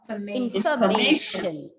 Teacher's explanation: the second syllable and the fourth syllable are reduced to the shortest schwa sound. And obviously this will be in, short I sound.